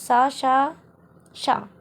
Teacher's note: ऊष्म व्यंजन का उच्चारण जब हम करेंगे तो सा, शा, शा ये हमारे अघोष में आएंगे